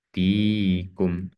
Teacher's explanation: ada ya sukun, sebelumnya merupakan kasroh sehingga dibaca 2 harokat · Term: matobi'i